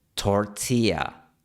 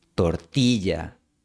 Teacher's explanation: Algunos extranjeros incluso eliminan por completo la consonante y en palabras como tortilla. La pronunciación gringa es tortilla, sin fricción. La pronunciación nativa es tortilla, con un poquito de fricción.